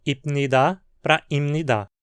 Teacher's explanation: o p se tornou nasal por influência da consoante nasal que vinha depois dele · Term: assimilação